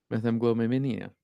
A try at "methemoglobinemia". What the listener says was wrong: Yeah, no, you gave up at the end too.